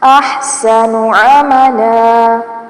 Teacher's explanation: احسن نون کی پیش کو لمبا نہیں کرنا